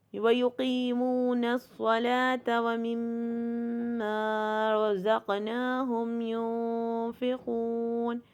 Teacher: وَمِمَّا میں دیکھیے خالی الف سے پہلے زبر، پہلے تو 2 کاؤنٹ کا غنہ کریں گے کیونکہ میم مشدد ہے، اور خالی الف سے پہلے زبر ہے تو اس لیے اس کو 2 کاؤنٹ تک لمبا کریں گے.